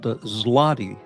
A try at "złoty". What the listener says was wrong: Yes, zloty, which literally means in Polish, it's actually called złoty. The L is pronounced as a W in Polish, so the L is a W. Złoty, which literally means gold. ZL.